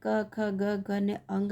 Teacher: તો ક વર્ગ આખો એટલે એની અંદર ક ખ ગ ઘ ને અંગ આવી જાય અને એનું ઉચ્ચારણ કંઠ્યથી થાય